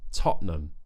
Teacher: O, closing the glottis, which is just in between the vocal cords, tightening it so that we cut the vowel out to create this fake T. Imagine you're kind of swallowing the T.